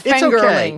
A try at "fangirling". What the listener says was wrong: It sounded like you said fingerling, which is a potato.